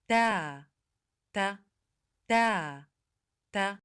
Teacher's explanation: This letter belongs to the dental letters because it's pronounced when the tip of the tongue touches the upper teeth. تا تا تا تا It's considered a voiceless letter because the sound is produced without vibration in the vocal cords. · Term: التاء